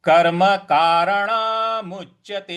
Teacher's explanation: कर्म कारणामुच्यते। जो म है, म के आगे जो च है उस पे आघात देना है, थोड़ा सा बल लगाना है।